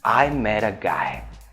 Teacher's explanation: transform the T's into an R sound